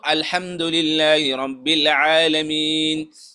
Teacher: نو الحمد کې ح ده د مرۍ د من نه ادا کیږي. نو زمونږ اکثر خلک څه وایي خا وایي.